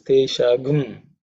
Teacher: How the Gum is missing, I have mentioned in the past, the Anuswara becomes Gum in Yajur Veda tradition of chanting